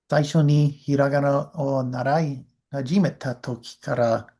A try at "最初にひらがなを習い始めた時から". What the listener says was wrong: Make sure you breathe out actually. Don't run into the next part. 最初にひらがなを and then I want you to breathe out.